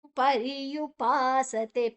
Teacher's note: ಪರ್ಯುಪಾಸತೆ ಪಾ ದೀರ್ಘಾಕ್ಷರ ತೇ ದೀರ್ಘಾಕ್ಷರ